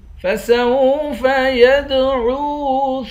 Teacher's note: یا کو دال کے ساتھ ملا کر دال پر قلقلہ کریں گے، دال حروف قلقلہ ہے۔ یدعو، عین کو واو کے ساتھ ملا کر واو کو بھی ایک الف کی مقدار کھینچیں گے۔